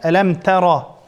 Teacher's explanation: Ra zabar peshalatli cho'ng o'qilamdi.